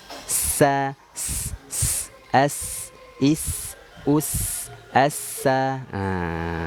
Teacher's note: Jadi ini sifat as-shafir, dia mengeluarkan desisan.